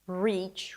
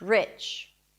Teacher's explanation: So the first one is the tense E, and the second one is the relaxed I.